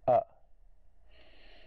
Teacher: that's the guttural vowel sound so in that guttural position at the back of the throat we open it up